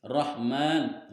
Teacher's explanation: Alif lam syamsiyah karena huruf alif di sini bertemu dengan lam huruf ro, maka masuk ke dalam alif lam syamsiyah. Rahman, huruf ro-nya dibaca tafhim tebal, dan yang selanjutnya adalah mad asli karena ada fathah yang berdiri, atau mad tabi'i.